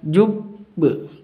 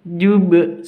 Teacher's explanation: qalqalah kubra cara membacanya dipantulkan kalau ada tasydid